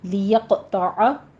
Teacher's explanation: قوف کے اوپر قلقلہ کریں گے، قوی آواز کے ساتھ آپ نے قلقلہ کرنا ہے